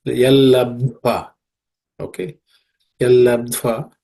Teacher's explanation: the second consonant ud is an aspirated one.